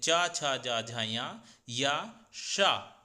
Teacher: च, छ, ज, झ, य य, श इन सभी का तालु उच्चारण स्थान होता है। जब भी आप च, छ, ज, झारे वर्ण बोलेंगे तो आपकी जीभ प्राय दांत के ऊपर जो तालु होती है उस पर उस पर स्पर्श होगी।